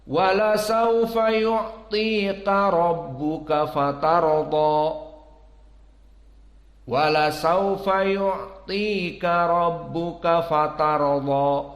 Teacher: Maka di sini mufakhamah ra, mufakhamah dad.